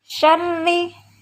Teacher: ada ra kasroh, maka hukum bacaannya adalah ra tarqiq atau ra yang dibaca tipis